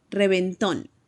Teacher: Then we head over to Mexico, and it sounds more like reventón. Remember that V sound in English is not the same as in Spanish. In Spanish, it sounds more like a B.